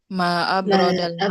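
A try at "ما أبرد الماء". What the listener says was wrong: Jadi intonasinya seperti itu Bu ya, bukan seperti pertanyaan. Nah, jadi bukan seperti itu. Yang benar ma'a berodal ma'a. Jadi seperti pernyataan pada umumnya.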